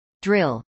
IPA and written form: drɪl (drill)